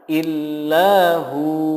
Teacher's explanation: ketika diwakafkan menjadi illahu, hu-nya dibaca panjang 2 harokat.